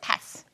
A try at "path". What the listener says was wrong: 근데 pass는 아니야. path예요. paths. TH가 발음이 나는 TH인데 S가 붙잖아요. 그러면 death에다가 S를 붙여서 deaths. 그렇게 발음해.